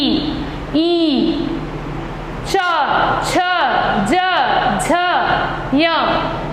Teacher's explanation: अब जैसे इचु यशानाम तालु है, तो जब हम करते हैं ई, च, छ, ज, झ, य, तो इस तरह क्या होता है कि हमारी जीभ जो है वो तालु को टच करती है और तब हम उसका उच्चारण कर पाते हैं, इसलिए यह है तालु।